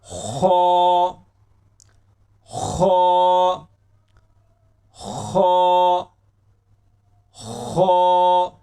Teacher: याद रखें खो को पुर पढ़ा जाएगा, मोटा पढ़ा जाएगा, ये मोटे हरूफ में शामिल है।